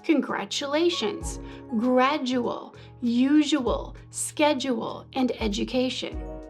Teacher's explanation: when consonants like t or d appear before the glide y, the tongue shifts slightly back toward the velum to create a softened sound